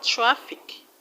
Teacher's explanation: This word has two syllables, and you're going to stress the first syllable, which happens to be the second syllable from the end of the word.